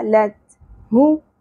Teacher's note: تا کو پر نہیں کرنا تا باریک ادا ہوگا